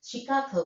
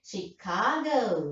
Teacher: She stresses the second syllable.